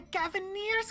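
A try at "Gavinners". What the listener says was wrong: I think it's pronounced Gaviners. I only see one E. I mean, there was only one E.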